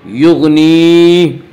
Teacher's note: یغنی، یا مدہ وہ یا جو ساکن اس سے پہلے زیر ہو، یا مدہ کو 1 الف کے برابر کھینچ کر پڑھیں گے